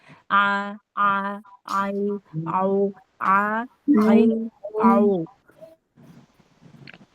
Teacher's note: itu ngepas-ngepasin ain dari tengah tenggorokan. Nah, itu makhrajnya di situ.